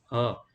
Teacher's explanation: જે વ્યંજનોનો ઉચ્ચારણ કરતી વખતે નાદ તંતુ વચ્ચે થોડી જગ્યા રહેવાથી તેમાં કંપન ઉત્પન્ન થાય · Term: મરમર વ્યંજન